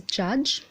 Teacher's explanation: same diagram the last word is Judge the final sound is the vocal chords are held together the sound is voiced and the passive articulator is the region behind the alveolar Ridge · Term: affricates